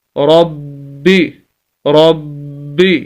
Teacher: با شد کو پڑھنے کا طریقہ سخت کر کے آواز کو روک کر